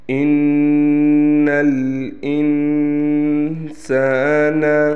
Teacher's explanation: بِهِ جَمْعًا، إِنَّ الْإِنسَانَ، یہاں پر غنہ ہے، لہٰذا ایک الف کے برابر غنہ کیا جائے گا